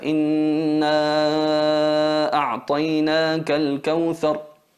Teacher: Lo llamamos así cuando la letra del mad es situada al final de la palabra y es seguida de la letra hamza al principio de la segunda palabra. La duración del alargamiento del sonido es de 4 o 5 tiempos en el caso de la versión del Imam Hafs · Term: mad al-jaiz al-munfasil